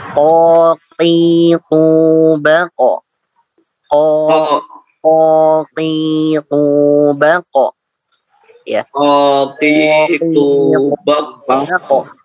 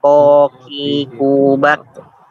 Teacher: pangkal lisannya harus terangkat ke atas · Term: huruf isti'la